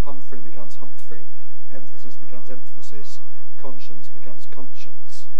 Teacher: between a nasal and a voiceless fricative you get a plosive agreeing in place of the nasal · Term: intruding